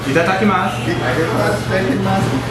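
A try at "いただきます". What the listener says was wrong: You say it too fast. Itadakimasu.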